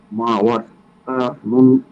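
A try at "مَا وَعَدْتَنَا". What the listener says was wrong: ওয়া'আদতানা, নুনে টান হবে। মা ওয়া'আদতানা।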